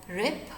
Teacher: sometimes it may be pronounced with some aspiration like rip, and sometimes it may be pronounced with voice, it may become voiced.